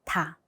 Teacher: 한글에서는 공기가 훨씬 더 많이 나가요.